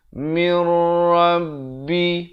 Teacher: Mir Rabbi. Masuk tanpa dengung. Idgham bila gunnah.